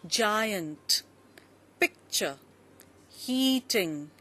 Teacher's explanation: so uh if we take up two syllable words the where the stress is on the first syllable